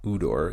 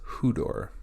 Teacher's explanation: We have upsilon with a rough breathing and an acute accent. So we have the emphasis at the beginning and we have the H sound being added. So it's not udor, it's hudor.